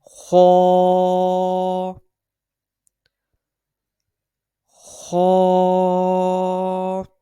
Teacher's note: ये हरूफ मुस्तआलिया में से भी है, इसको हमेशा हर हालत में पुर यानी मोटा पढ़ेंगे। इसको एक उंगली की मिकदार के बराबर खींच के पढ़ा जाता है, और इसकी अदायगी जो है ये हलक के ऊपर वाले हिस्से से अदा होता है।